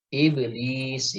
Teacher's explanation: qalqalahnya tarkik ya, qalqalahnya tipis ya. Karena ba tidak memiliki sifat isti'la